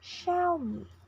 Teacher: The next brand is Xiaomi in both accents with stress on the first syllable.